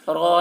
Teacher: وَلَمْ يَجْعَلْ لَهُ عِوَجًا قَيِّمًا لِيُنذِرَ را زبر را کے اوپر زبر ہے، زبر کو جلدی پڑھیں، تھوڑا بھی نہ کھینچے، اور را کے اوپر زبر ہے اس لیے را کو پر پڑھیں گے